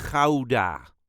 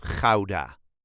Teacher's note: And yes, the reason for a lot of English speaker to say Gouda is because of that harsh Dutch g at the beginning